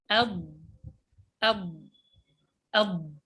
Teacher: معنى الاستطالة هو امتداد الصوت من أول حافة اللسان إلى منتهاها. يعني الصوت يأتي فيضرب هنا ويمتد الصوت، الهواء يضرب في المخرج عند تلامس اللسان مع الأضراس، حافة اللسان مع الأضراس، ثم يمتد الصوت إلى حافة اللسان، إلى طرف اللسان، من هنا إلى ما يقرب من طرف اللسان إلى نهاية الحافة.